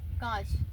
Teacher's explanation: अनुनासिक हिंदी में, ठीक है। हवा नाक और मुख दोनों से बाहर निकलती है